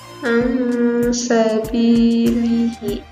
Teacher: Di sini ada nun mati bertemu dengan sin. Bacanya samar ya.